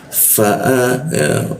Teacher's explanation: Fa bibir bawah bertemu gigi atas.